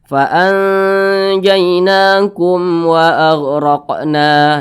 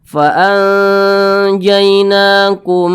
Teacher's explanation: adalah izhar syafawi maka mim sukun ini berjumpa dengan huruf wa maka namanya izhar syafawi dibaca jelas tidak berdengung faanjainakum wa agqna nah tidak berdengung jangan dipanjangkan jangan dibaca faanjainakum